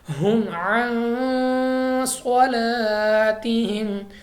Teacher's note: غنہ کے بعد صاد کو ہم نے موٹا پڑھنا ہے، یعنی منہ اور آواز کو کھول کر پڑھنا ہے